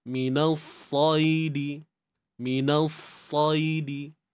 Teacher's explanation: Angkat pangkal lidah kita untuk dapatkan unsur tebal tu, sifat tebal tu, nak dapatkan tebal tu.